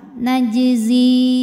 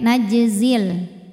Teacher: Kalau berhenti panjang. Kalau diterusin gugur panjangnya. Zi-nya jadi pendek. Najzil. Namanya takhallus bil hadfi.